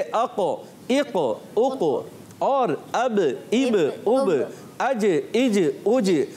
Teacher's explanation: जब ये कलकला उर्फ़े कलकला साकिन होते हैं तो कलकला खूब ज़ाहिर होता है और फ़ौरन कलकला होता है, आवाज़ फ़ौरन लौटती है